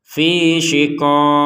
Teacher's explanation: harakat dari huruf terakhirnya ini tidak terbaca lagi tapi diganti dengan pantulan dari huruf q